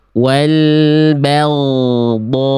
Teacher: yang A kurang tepat karena dia kadar tebalnya kurang maksimal. Kenapa bisa? Karena pangkal lidahnya yang A itu pasti kurang terangkat.